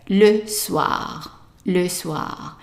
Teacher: Now the next word is the evening, and the evening we have an OI here that is pronounced as an wa